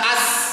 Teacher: shad zai sin ujung lidah bertemu lapisan dalam ujung gigi seri bawah